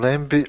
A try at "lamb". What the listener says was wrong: Lamb, the B is silent. Kind of. We don't say lamb. just say lamb. Lamb.